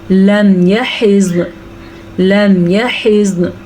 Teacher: زوات کو بھی روکنا ہے اور نون کو بھی، کیونکہ زوات پہ بھی وقف ہے اور نون بھی وقف کی وجہ سے ساکن ہو گیا ہے، زوات پہ بھی ساکن ہے اور نون بھی ساکن ہو جائے گا۔